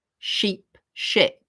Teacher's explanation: notice they both sound short, sheep, ship, even though the vowel is different. That's because in sheep, as in an animal with wool, the vowel is E.